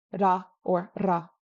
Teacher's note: The other option is rolled or tapped, ra or ra. This is more common in Eastern dialects. Amdo loves to roll it, Kam loves to tap it, ra versus ra.